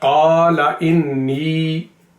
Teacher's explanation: क़ा को लंबा करना है, ला को नहीं